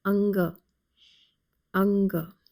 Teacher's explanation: this letter is ang Anga no aspiration in this particular letter the a sound is closed mouth it has a slight nasal sound